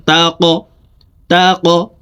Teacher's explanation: কফ কলকলার হরফ উপরের দিকে ধাবিত করে ধাক্কা দিয়ে উচ্চারণ করতে হবে